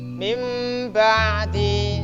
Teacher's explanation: nun mati berjumpa dengan ba dibaca iklab ditambahi nun mim kecil. Artinya nun mati berjumpa dengan ba atau tanwin berjumpa dengan ba, bacalah seperti mim kecil ini.